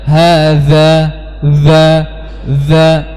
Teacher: huruf dalal lebih lebih jelas karena dia sifatnya apa jahar · Jadi salah kalau kita tidak menjaharkan huruf dzal. Ya, za, salah, za.